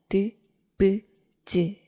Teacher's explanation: 몇몇 자음들은 바람을 잠깐 막았다가 터뜨려요. 이렇게 하면 드, 브, 즈 같은 발음을 만들 수가 있습니다.